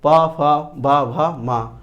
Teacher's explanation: पा होंठ से बोले जाएंगे, इसलिए इन्हें ओष्ठ्य व्यंजन कहेंगे। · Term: होंठ व्यंजन